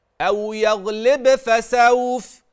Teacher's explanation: هذه القلقله التي في الباء هذا الاضطراب الذي تسمعه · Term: القلقلة